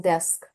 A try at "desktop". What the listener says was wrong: You are saying your desk.